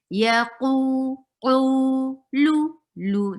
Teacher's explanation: By lifting your tongue from behind. From the root of your tongue will be lifted up towards your palate to make any letter heavy. You cannot circle your lips to make a letter heavy. · you are circling your lips for qaf here, not because the qaf is heavy, but because of dhamma